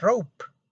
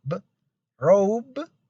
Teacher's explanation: if you say p instead of b, robe will sound like rope or cab will sound like cap.